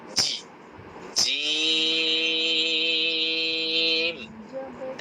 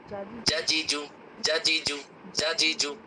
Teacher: জিহ্বার মধ্যখান, তার বরাবর উপরের তালুর সাথে লাগিয়ে অক্ষরটি উচ্চারণ করতে হয় শক্ত করে।